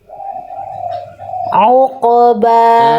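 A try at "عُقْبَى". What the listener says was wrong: Nah, lebih tekan. Nah, soalnya yang tadi mah nggak begitu bunyinya, beda. Dari situ coba, dari ulaika, ainnya tegaskan lagi.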